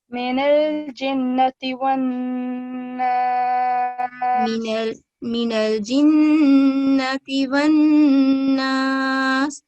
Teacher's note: नून मुशद्दद है, नून पे थोड़ा सा ठहरते हुए पढ़ें।